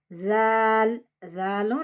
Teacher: ஜால் சொல்லும்போது முன்னினாக்க வெளிய வச்சு சொல்லணும்